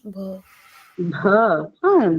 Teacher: it's a bilabial sound, but it's an aspirated bha, right? But in English we don't have aspirated bha.